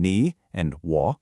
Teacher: Then you've got the famous third tone that dips down and comes back up, like in ni and wo.